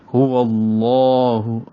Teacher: واو کو لام سے ملانا ہے جس لام پر تشدید ہے، تو یہ لام لام اسم جلالہ کہلاتا ہے، کیونکہ لفظ اللہ کو اسم جلالہ کہتے ہیں اور اس کے اندر جو لام ہے اس کو لام اسم جلالہ کہتے ہیں، اور اس سے پہلے واو پر چونکہ زبر آئی ہے تو یہ لام اسم جلالہ یعنی موٹا پڑھیں گے، واو کو ہونٹوں کی گولائی سے ادا کریں گے اور لام سے ملائیں گے۔